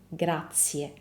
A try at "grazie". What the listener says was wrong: grazie. Okay, so he's skipping the ending E completely.